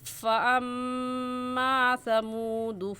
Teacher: فَأَمَّا میں میم مشدد ہے اور میم مشدد پر ہمیشہ غنہ ہوتا ہے، اس وجہ سے یہاں غنہ کریں گے.